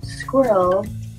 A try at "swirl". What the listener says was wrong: You just said squirrel. Swirl. Swirl. Swirl. S-W-I-R-L.